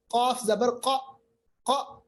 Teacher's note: कौफ पढ़ते वक्त मोटी आवाज आती है और होंठ गोल होते हैं